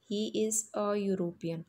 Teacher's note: It begins with E alphabet, but when you pronounce it, then it begins with Y sound.